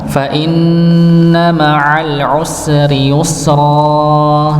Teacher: Fa inna, ada nun yang dia bertasydid maka didengungkan. Ini jangan lupa, kalau mendapati huruf nun yang sukun maka jangan lupa untuk didengungkan, ditahan.